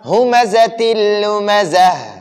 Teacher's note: اس دو زیر تنوین کو ہم نے لام میں مدغم کر دیا، لام میں داخل کر دیا، لام میں مرج کر دیا. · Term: ادغام